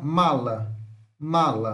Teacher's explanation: temos 1 m nasal bilabial sonora